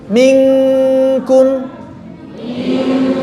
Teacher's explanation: kafnya sudah menyentuh makhraj dan suara kafnya tipis